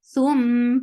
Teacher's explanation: Thum for the circular lips. The sound is very short. Attach with mim will get sifa of gunna.